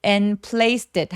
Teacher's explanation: and의 뒤소리는 잘 안 내고요